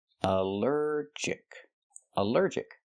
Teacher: Allergic is three syllables. Allergic. The stress is on the second syllable.